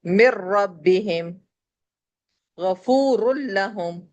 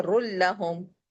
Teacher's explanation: رن کے بجائے ہم نے نون کو اسکپ کر دیا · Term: بلا غنہ